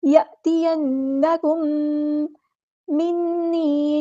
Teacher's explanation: میم ساکن کے بعد میم آیا ہے، ادغام شفوی ہو رہا ہے